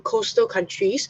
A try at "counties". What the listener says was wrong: Counties, not country. Coastal counties.